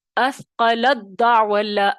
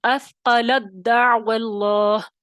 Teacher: دال کی آواز سنائی دے گی آپ کو، تا کی نہیں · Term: ادغام تام